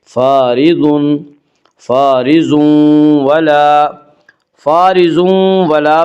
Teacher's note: فارض ولا میں ادغام مال غنہ ہوگا۔